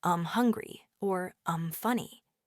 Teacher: It's often not even a hard m sound. It's more like a very soft um. So you might hear um hungry or um funny.